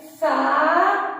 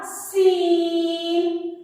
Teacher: सा पढ़ते हुए हम दांतों के दरमियान में जुबान लाएंगे और सीन पढ़ते हुए हम दांतों को जोड़ लेंगे।